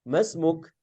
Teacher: na Mumtaz terdengar ada HAM ada udara yang keluar dari huruf Kaf